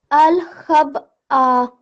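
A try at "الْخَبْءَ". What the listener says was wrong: Okay, and remember this is Hamza, not Ain, okay? Al-Khab'a, like alif sound. Alif sound, not Ain sound. Alif sound.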